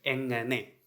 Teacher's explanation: So it is not engane but engane. So the nasal sound. So make the sound softer. So not the ga sound but nga sound.